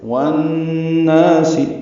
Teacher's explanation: والناس میں واو کو نون سے ملائیں گے، ادغام شمسی ہوگا، نا الف مدہ ہے، یعنی ادغام شمسی مع الغنہ ہے یہاں پہ، والناس آواز ناک کے بانس سے مل جائیں گے